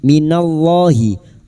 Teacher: lam jalalah yang didahului fathah dibaca tafkim